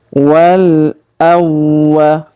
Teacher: huruf waw kita tahan dan tekan karena terdapat tanda tasdid